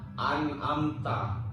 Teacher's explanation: Jadi nggak boleh disamar-samarin mim dengan ta, nggak bisa. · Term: izar syafawi